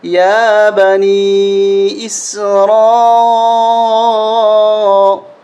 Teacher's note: اس را کو موٹا بھی کریں گے اور اس کے ساتھ ساتھ 5 الف تک ہم کھینچیں گے، بڑی مد ہے